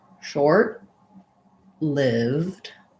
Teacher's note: sound in american english so they it sounds like shor short we would stop that t and release it into the l · lived, we just go right from the V to the D